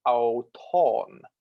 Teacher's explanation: the pitch on a circumflex accent starts high and then lowers